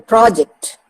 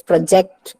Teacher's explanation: when I use it as a noun, I'm stressing upon the first syllable, project. When I use it as a verb, I stress the second part of the word